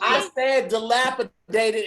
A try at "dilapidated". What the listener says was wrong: You didn't pronounce the D properly.